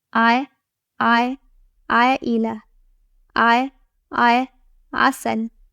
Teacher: Ayn has no dots and comes from the middle section of the throat. It is not a vowel, so avoid pronouncing it as e, u, or e sounds.